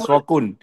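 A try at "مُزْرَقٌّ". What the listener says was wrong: Mus, bukan mas.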